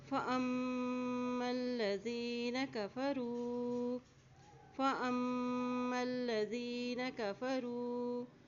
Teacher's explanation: فَأَمَّا الَّذِينَ كَفَرُوا، یہاں دیکھیں میم کے پر شد ہے، جب میم پر شد آتی ہے تو وہاں پہ غنہ ادا کرتے ہیں، یہاں پہ غنہ ادا کیا جائے گا، اور اسی طرح میم کے زبر کو لام کے ساتھ ملائیں گے، لام کے پر بھی شد ہے۔